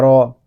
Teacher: را کو پر پڑھیں گے کیونکہ را کے اوپر زبر آ رہا ہے